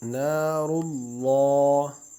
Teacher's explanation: نون کو ایک الف کی مقدار کھینچ کر را کو پر پڑھیں گے